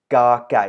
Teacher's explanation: the initial K sound, or K unaspirated K sound, cannot be extended because as soon as you extend it, you come to this sound, which is not a sound anymore.